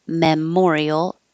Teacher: the me is not stressed so it can be me Memorial or ma